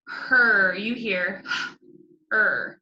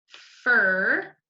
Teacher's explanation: when you have ER, IR, and UR, you do not even hear the vowel at all. It doesn't even really, you don't even really hear it.